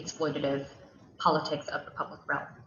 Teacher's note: that falling pitch she's going down the staircase